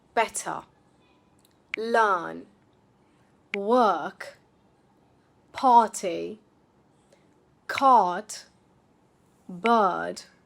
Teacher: the R at the end or after a vowel is not pronounced at all. Instead, it gets replaced with a slightly longer vowel sound.